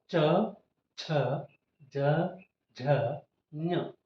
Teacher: ಚ ವರ್ಗ ಚ ವರ್ಗ ಅಂದಾಗ ಇದು ಇದಕ್ಕೆ ತಾಲವ್ಯ ಅಕ್ಷರಗಳು ಅಂತ ಕರೀತೇವೆ ತಾಲವ್ಯ ಅಂದ್ರೆ ತಾಲುವಿನಲ್ಲಿ ಹುಟ್ಟುವ ಅಕ್ಷರಗಳು ಅಂದ್ರೆ ಇಲ್ಲಿ ಗಂಟಲಿನಿಂದ ಮುಂದೆ ಬಂದಾಗ ನಾಲಿಗೆಯ ಮೇಲ್ಭಾಗದಲ್ಲಿ ಮತ್ತು ಮೇಲ್ದವಡೆಯ ಒಳಭಾಗದಲ್ಲಿ ಅಂಗಳ